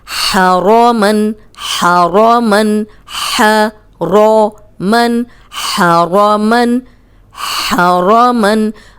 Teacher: हा हरूफ हल्की है, हलक से निकालें, रॉ को पुर पढ़ें, क्योंकि रॉ पे ज़बर आ गई है।